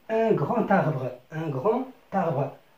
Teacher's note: لاحظ عزيزي أن grand تنتهي بالدي، بحرف الدي، حرف ساكن، ولكن عندما نطقنا سمعنا ت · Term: liaison